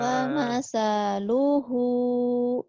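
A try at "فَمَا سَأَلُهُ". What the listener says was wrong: Bukan, nggak ada yang panjang, ujungnya doang. Famasaluhu.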